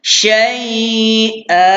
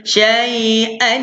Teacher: tanwin baris atas ni kita tak boleh bunyikan dia